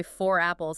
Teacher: if they say 4 apples, suddenly the R just snaps back into existence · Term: linking R